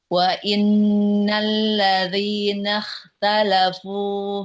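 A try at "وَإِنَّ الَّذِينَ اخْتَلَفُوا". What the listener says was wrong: huruf khnya kurang mengalir.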